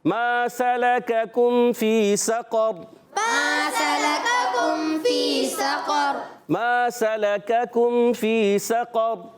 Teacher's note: سقر سین پر زبر ہے, قاف پر زبر ہے, را پر زبر ہے, وقف کرنے میں را ساکن ہو جائے گا اور حرکات کو بغیر کھینچے ادا کریں گے. را ساکن سے پہلے زبر آ رہا ہے سقر میں, تو یہ را پر ہو جائے گا. قاف کو بھی پر رکھنا ہے, زبان کی جڑ و تعلق کا نرم حصہ یہ قاف کا مخرج ہے.